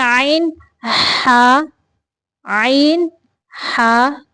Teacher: देखें आन हा आईन हा हलक के दरमियानी हिस्सा से यानी हलक के दरमियानी हिस्से से आन हा निकलते हैं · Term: रूफे हलक, हरूफ हल्किया